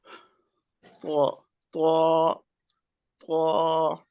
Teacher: हमारे होंठ गोल नहीं होने चाहिए, हमारे होंठ लंबे ही रहने चाहिए।